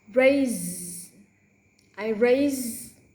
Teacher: even though spell S is pronounced with voice Z. Raise.